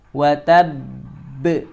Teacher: cara bacanya kita qalqalahkannya itu ditahan dulu sebanyak 3 ketukan ya, 2 sampai 3 ketukan. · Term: qalqalah akbar